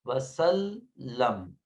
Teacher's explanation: لام کے اوپر تشدید ہے لہٰذا لام 2 مرتبہ پڑھایا جائے گا، سین کے ساتھ بھی اور میم، وسلم۔